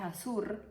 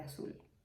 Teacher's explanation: el fenómeno del rotacismo, que es cuando dices azur en lugar de azul